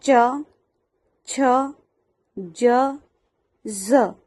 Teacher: તાલવ્ય, તાલવ્યમાં આ વ્યંજનોનો ઉચ્ચાર તાળવામાં એટલે કે મોઢાના ઉપરના ભાગથી થાય છે। જીભ ઉપર તાળવાને સ્પર્શે છે